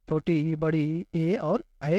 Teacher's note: जिन स्वरों के उच्चारण में जीभ का अगला भाग ऊपर उठता है उसे हम क्या बोलते हैं, अग्र स्वर बोलते हैं। तो अग्र स्वर कौन कौन से हो गए, छोटी ई, बड़ी ए और ऐ, ये क्या हो गए, अग्र स्वर हो गए।